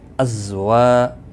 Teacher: ازا کو سختی کے ساتھ پڑھیں ذال کے مقابلے میں تاکہ زا ادا ہو جائے · وا الف مدہ ہے، ایک الف کے برابر کھینچ کر پڑھیں